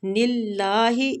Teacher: دو وہ مد کے ساتھ ہے، دو کو بھی ایک حرکات کھینچیں گے۔ نِلّٰہِ، ادھر اللہ کی لام کو ہم نے باریک پڑھنا ہے نون کی کسرہ کی وجہ سے